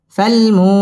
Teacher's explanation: ফালমু মধ্য তবাই পেশের বাম পাশে জজম ওয়াও মদের হরফ একালিফ টেনে পড়তে হবে। ফালমুরি র বারিক হবে।